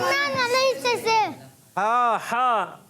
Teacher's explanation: ہا ادا ہوتا ہے حلق کے درمیان والے حصے سے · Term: ہا کی ادائیگی